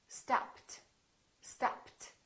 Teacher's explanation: What happened to the ed? It became a t, stopped.